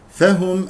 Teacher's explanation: الهاء مضمومه نضم الشفتين فيها